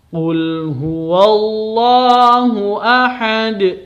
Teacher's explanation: Ahadun dibaca sukun karena berhenti, maka ada pantulannya karena ini termasuk huruf qalqalah